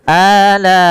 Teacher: Alai, yaitu mad wajib muttasil pada lafal la, yang dimana di sini bertemunya atau adanya hamzah yang datang setelah huruf mad, dan hamzah tersebut pada satu kata, maka dinamakan dengan mad wajib muttasil, harus dipanjangkan sepanjang 4 atau 5 harakat. Alai, kemudian rabbikuma, mad tabi'i fathah bertemu dengan tukadziban, ban mad arid disukun sebagaimana tadi, sebagaimana pada lafal hisan.